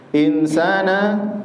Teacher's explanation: dibaca ghunna ada tempo di situ insana di situ ada ikhfa ikhfa nun sukun bertemu dengan Sin samar ya pertengahan saja Kemudian didengungkan